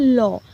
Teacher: তুমি যদি এই লটা বলতে যাও তাহলে দেখবে দুপাশ থেকে তোমার একটা শব্দ কিন্তু বেরোচ্ছে, যেমন ল দুপাশ থেকে বেরোচ্ছে, তো এটা হচ্ছে পার্শ্বিক ধ্বনি।